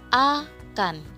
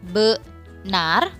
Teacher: Saat kita menyebutkan benar, bunyi A tidak bisa langsung terbuka karena lidah kita langsung membentuk fonem baru setelahnya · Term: suku kata tertutup